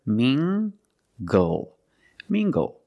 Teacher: using the nasal ng sound and the hard g, tang, g, g, tangled.